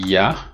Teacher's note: it's a voiced palatal approximant